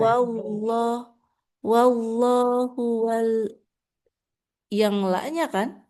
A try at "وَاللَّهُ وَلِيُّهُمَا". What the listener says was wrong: Enggak, lanya enggak tasdid. Yanya yang tasdid. Heeh.